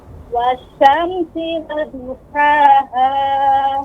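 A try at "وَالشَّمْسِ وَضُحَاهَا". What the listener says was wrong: Ya, huruf dhad ya. Dia lebih berat pengucapannya. Dha.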